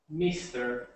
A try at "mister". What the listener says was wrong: So instead of meester, that's that I sound again. Mister, mister. Mister. Not meester, mister. Miss. Miss. Miss. So just be careful with that sound there, the I sound. Instead of making it sound like an E, you want to make sure it sounds like the I.